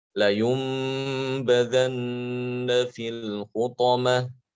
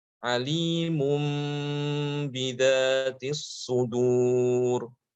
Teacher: Jadi nunnya itu diubah menjadi mim. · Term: iqlab